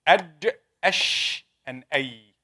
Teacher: From the middle of the tongue, jim, sheen, and ya.